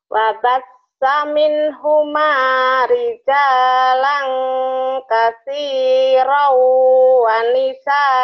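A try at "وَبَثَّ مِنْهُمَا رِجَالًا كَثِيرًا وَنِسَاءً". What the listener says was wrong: pinter sa-nya di ujung lidah ya nih kayak gini wabas wabas lidahnya kayak cadel ya. Wabas wabas min huma rijalan kathirau wanisa'a. wabasa min wabasa. Saatnya dibaca tuh jangan wabas min. Wabasa. Double. Wabasa min.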